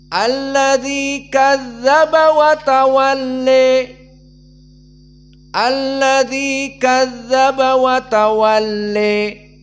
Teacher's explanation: Keduanya dibaca dengan Al imalah alkubro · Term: al-imalah al-kubra